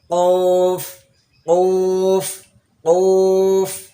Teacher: কোফ উচ্চারণ করার সময় জিহ্বার ঘোড়া, জিহ্বার গোড়া তার বরাবর উপরে তালুর সঙ্গে লাগাইয়া, জিহ্বার গোড়া গিয়ে উপরে তালুর সঙ্গে লাগবে।